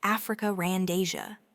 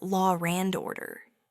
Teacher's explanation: This fascinating phenomenon occurs when a word ending in a vowel sound is followed by a word that starts with a vowel sound. An R sound is subtly or sometimes not so subtly inserted between them to ensure a smooth transition. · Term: intrusive R